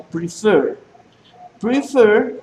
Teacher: tiene el acento en la última sílaba